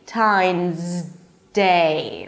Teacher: Times. Your tongue is already up there. So don't bring it back down. Move from the z to the d immediately.